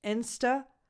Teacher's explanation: So you start with a lax [ɪ] as in the pronoun “it”